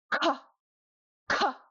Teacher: It's really hard. You really aspirate it very strongly.